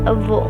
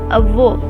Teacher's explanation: The O is open like you are surprised.